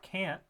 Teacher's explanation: the V and that indicates that it's nasalized and that is that nasalization is coming as an assimilation towards that nasal consonant which is following it